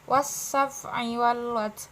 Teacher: Karena alif lamnya bertemu dengan huruf sa, maka masuk dalam sa-nya. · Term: asamsiyah